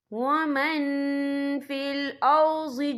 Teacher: یہ دیکھیں ومن، یہاں نون ساکن ہے، نون ساکن کے بعد جو ہے فا ہے، تو ہم یہاں افا کریں گے، نون ساکن کی آواز کو ناک میں چھپائیں گے.